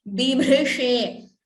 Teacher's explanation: first B is Alpa Prana. Bh, that Bha there is Mahaprana.